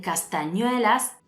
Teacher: el acento cae sobre ñue, es decir, la penúltima sílaba. Así que esta palabra es llana y como termina en S, no lleva tilde.